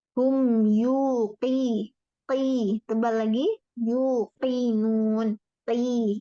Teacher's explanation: Selain tebal itu domahnya dijelaskan lagi monyong bibirnya ya.